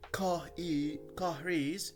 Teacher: the next word starts with a vowel, the R is pronounced. Okay, in that case, it links to the following vowel rather than caris.